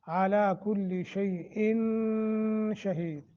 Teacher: इख्फा करेंगे, लंबा करके पढ़ेंगे आवाज़ को नाक में ले जाकर